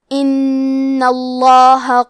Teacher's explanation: کلمت ان میں حرف نون کے تشدید کو ظاہر کریں گے اور لفظ الجلالہ کے لام کو موٹی آواز میں پڑھیں گے